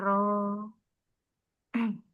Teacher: Ujung lidah yang bergetar